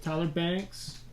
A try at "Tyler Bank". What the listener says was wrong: Bank, no S. Tyler Bank, no S.